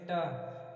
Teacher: हमारी जो जीभ है ताल को स्पर्श करते हुए मुड़ जा रही है, इसीलिए हम क्या करेंगे, इसको मूर्धा में रखते हैं, मूर्ध से इसकी आवाज़ निकलती है।